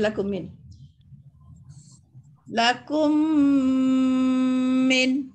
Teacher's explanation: kita kena dengungkan mim mati bertemu dengan mim itu ya. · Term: idgham syafawi